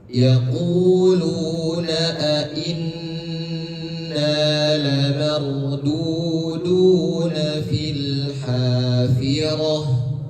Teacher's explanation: Inna ditekan terlebih dahulu kemudian ditahan karena di situ ada nun tasydid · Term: Gunnah